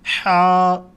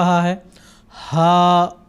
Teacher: ان میں بھی فرق ہے آواز کے لحاظ سے۔ حا کی ادائیگی میں آواز گلے کی طرف اندر کی طرف جاتی ہے اور دوسرا جو ہا ہے اس کی آواز نکالتے ہوئے ہوا باہر کی طرف نکلتا ہے۔